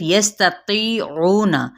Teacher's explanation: تا باریک ہے اور تی یہاں پہ مد اصلی بالیا